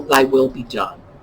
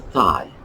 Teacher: the voiced and voiceless dental fricatives we know as th's